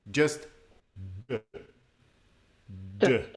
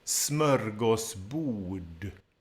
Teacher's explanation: Right at the end, you have RD together, and that is just said as one sound.